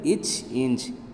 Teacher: நாவின் இடைப்பகுதி நடு அன்னத்தின் இடைப்பகுதியை பொருந்ததால் பிறக்கும் எழுத்துக்கள்